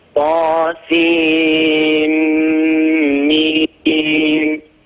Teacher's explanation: الغنة غنة الميم، لأننا نحن في الحروف المقطعة في أوائل السور نلفظ أسماء الحروف، فعندنا طا سين آخرها نون ساكنة، ميم أولها ميم متحركة، فندغم النون في الميم إدغام بغنة، والإدغام بغنة يحتاج غنة طويلة